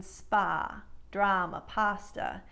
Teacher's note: But in case you have some American regionalisms in your speech, what might happen is you'll take words with this vowel sound and pronounce it with the wide nasal ah